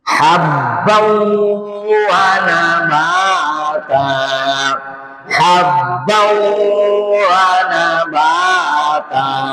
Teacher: habban tanwin ketemu waw, ini idgham di gunnah. Lama dia.